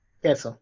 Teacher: so you don't pronounce u, you don't pronounce u there. So it's queso.